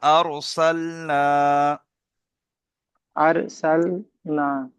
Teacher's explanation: আলিফ মাদ্দা বলা হয় তাকে এক আলিফ পরিমাণ টান দিয়ে পড়তে হয়